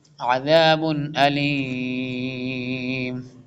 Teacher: تنوین کے بعد حمزہ آ رہا ہے تو کلیئر ریڈ کریں گے، عذاب علیم۔ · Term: اظہار